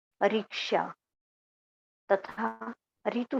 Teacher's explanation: रिक्शा तथा ऋतु शब्दों की पहली ध्वनि के उच्चारण में कोई अंतर नहीं रह गया। जैसे रिक्शा बोला हमने, इसमें हिंदी में र में छोटी की मात्रा आ गई, रिक्शा बोला गया।